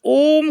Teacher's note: ह्रस्व स्वर से तीन गुना अधिक समय लगता है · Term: प्लुत